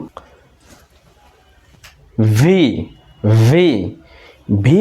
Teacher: উচ্চারণের সময় নিচের ঠোটটা উপরের দাঁতের সাথে লাগাবো বাতাস বের হয়ে যাবে